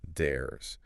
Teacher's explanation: When a voiced sound like R comes before the contraction, the Z stays voiced. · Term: voiced Z sound